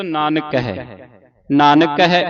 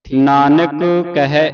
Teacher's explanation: ਜਦੋਂ ਉਚਾਰਨ ਕਰਨਾ ਦੋ ਕਕੇ ਦੀ ਆਵਾਜ਼ ਨਹੀਂ ਉਚਾਰਨ ਕਰਨੀ। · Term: ਇੱਕ ਹੀ ਕਕਾ